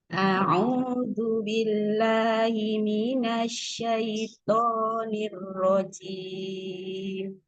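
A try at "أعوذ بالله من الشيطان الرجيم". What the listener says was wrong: Ke belakang-belakang bagus. Di a'udzu, agak cepat hamzahnya ketemu ain. A'udzu, a-nya tidak panjang.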